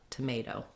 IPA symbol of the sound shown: ə